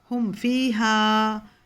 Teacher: میم کو پورا واضح پڑھ کے آگے وہ پہ نکل جانا ہے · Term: اظہار